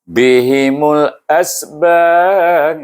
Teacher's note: huruf ba, huruf qalqalah. Maka kita baca dengan qalqalah kubra. Jadi, bihimul asbab.